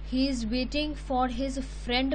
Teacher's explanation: That means ਆਪਾਂ ਫਰੈਂਡ ਉੱਪਰ ਜ਼ਿਆਦਾ ਸਟ੍ਰੈਸ ਪਾ ਰਹੇ ਹਾਂ। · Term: tonic stress